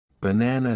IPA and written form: bəˈnænə (banana)